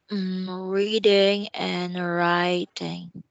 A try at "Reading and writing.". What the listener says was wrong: Wow, good job. You're good at reading.